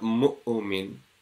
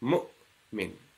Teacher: the voice is completely cut off. There's no echo sound to it. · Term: sukoon